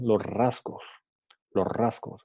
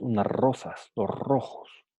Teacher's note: cuando S viene seguido por una R múltiple, a veces ese sonido se desaparece